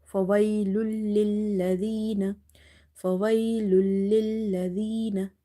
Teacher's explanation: this is idgham, merging but without gunna